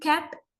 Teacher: Both are produced in the same way, same manner by completely blocking the airflow.